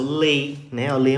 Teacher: em termos fonéticos eu saio de uma vogal e vou para uma semivogal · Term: decrescente